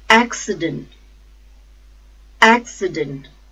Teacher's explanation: the stress is on first syllable